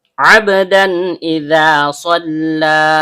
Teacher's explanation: Bunyi tanwinnya atau bunyi n-nya dibaca jelas tanpa dengung. · Ain, tenggorokan bagian tengah, ba huruf bibir. Karena baknya sukun dan berada di tengah kata, maka hukum bacaannya qalqalah sugro, bunyi pantulannya kecil. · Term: izhar halki